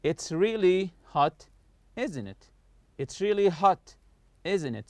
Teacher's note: falling intonation, meaning the voice goes down when we know the answer and are just asking for agreement · So I'm not raising my voice in the question tag here. I just want you to agree with what I say.